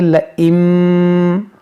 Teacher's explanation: لَئِن بَسَطتَ إِلَيَّ يَدَكَ، اب یہاں پر آپ غور کریں کہ یہاں نون ساکن کے بعد با ہے تو یہاں پر اقلاب کریں گے، یعنی یہاں اس نون ساکن کو ہم اس میم سے بدل کر پڑھیں گے